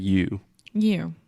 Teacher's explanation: we're really exaggerating the circle that we make with our lips at the end